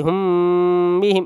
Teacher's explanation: اسی کو اخفاء شفوی بولتے ہیں، ناک میں دیر تک آواز روکیں گے